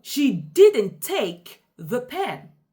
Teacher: For example, she didn't take the pen. In this sentence, I emphasize take, meaning that she might have done something else, but she didn't take the pen. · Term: stress